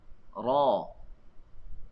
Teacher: tidak akan ada hembusan angin. Kalau ada hembusan angin, kita letak tangan di hadapan, kita akan rasa angin keluar. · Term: jahrun